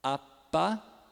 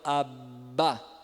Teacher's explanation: Prolonga o P e prolonga o B, ó, apá, e agora abá. Vocês sentiram que no B ele vibra? Exatamente, por quê? Porque as cordas vocais estão em ação. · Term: sonoros